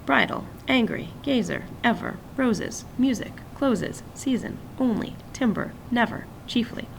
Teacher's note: I'm artificially stressing the first syllable just to prove the point they all start with an accented syllable but because of how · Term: trochaic